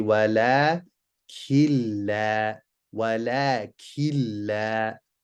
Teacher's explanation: Here we have a nun as-sakinah with a lam after it. We're going to skip the noon sound, shadda on the next letter. We don't do a ghunna, we don't hold. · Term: al-idgham without ghunna